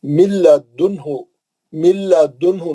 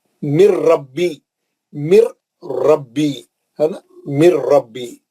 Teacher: نون نہیں پڑھیں گے، نون غائب ہو گیا · اور ادغام بلا غنہ کے 2 حرف ہے لام اور را۔ لام اور را میں جو ہے نون بالکل پڑھے ہی نہیں جاتا، نون کا غنہ نہیں ہوتا، نون بالکل ہم را اور لام سے ہی پڑھنا رہتا ہے نا۔